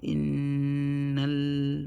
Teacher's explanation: But because of the shadda, because of the noon and mim ghunna letters, the rule ghunna, we're gonna inna, yeah. So innal, we have a shadow on the lam, so we're gonna read the lam also twice. First with a sukoon, and then second with the fatha on it. We know sukoon, lam sukoon is lan umar, so we're gonna hold the lam sukoon for the first sound for 1 second.